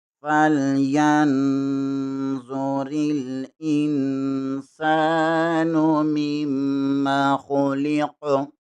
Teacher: میم زیر کو میم کے ساتھ ملائیں گے، میم شدد ہے، یہاں پر غنہ لازمی ہوگا. قاف حروف قلقلہ میں سے ہے، یہاں پر قلقلہ لازمی ہوگا · ہا زبر کو لام کے ساتھ ملائیں گے، یا زبر کو نون کے ساتھ ملائیں گے، را زیر کو لام کے ساتھ ملائیں گے. حمزہ زیر کے آگے نون ساکن ہے، نون کے آگے سین ہے، یہاں پر اخفا ہوگا. میم زیر کو میم کے ساتھ ملائیں گے، میم شدد ہے، یہاں پر غنہ لازمی ہوگا.